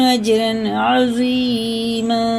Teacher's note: یہ تنوین کے بعد عین آ رہی ہے نا، یہ حرف حلقے میں سے جیسے لکھا ویسے ہی پڑھیں گے. یہ اظہار کا قاعدہ ہے.